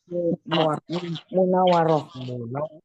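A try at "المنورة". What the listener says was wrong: Munawwarati. Munawwarati. Wawnya tasydid. Munawwar.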